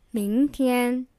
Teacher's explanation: 明, the second tone, means tomorrow, and 天, the first tone, means day, or sky.